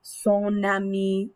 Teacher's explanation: that last sound in your possessive adjective glides over into the next word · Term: liaison